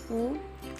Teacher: Vokal belakang, atas, bundar